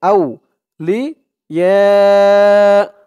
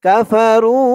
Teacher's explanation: দিয়ে ওয়াও ধরবে, আউ লি ইয়া চার আলিফ টান, মধ্যে মুত্তাসিল, এটা হচ্ছে মধ্যে মুত্তাসিল চার আলিফ টান, আর এটা হচ্ছে মধ্যে মুনফাসিল তিন আলিফ টান